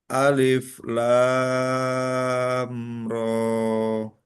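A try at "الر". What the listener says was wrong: Hmm. Panjangan. Ro segitu aja. Ya, dua.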